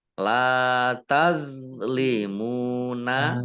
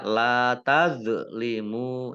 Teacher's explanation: La tazlimuna lam fathah alif mat tabi'i panjang 2 harokat. Tazlimuna the sukun bukan kolkolah ya. Ingat, bukan kolkolah jangan dipantulkan. La tazlimuna jangan dibaca la tazlimu ya salah ya.